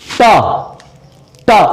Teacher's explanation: जब आप लोग टा बोलेंगे तो आप लोग की जीभ ऊपर टकराती है, ऊपर टकरा के नीचे गिरती है आपकी जबान। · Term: मूर्धन्य